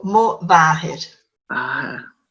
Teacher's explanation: Just like BH, MH becomes like a V